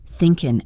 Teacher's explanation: thinkin' again shows the dropped G sound